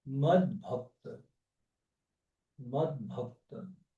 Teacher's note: A palavra é mat, mat, com T, seguida de consoante sonora. T é surdo, B é sonoro. Aí o que acontece? O T se transforma em D.